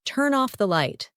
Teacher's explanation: a native speaker will say turn off the light like it's one single word